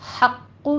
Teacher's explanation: हक़्क़ु में हा बारीक है, क़ौफ़ के ऊपर तशदीद भी है, सख्ती से पढ़ेंगे, और इसको आपने पुर भी पढ़ना है। आखिर पे आपके होंठ गोल हो जाने चाहिए क्योंकि क़ौफ़ के ऊपर ज़म्मा भी है।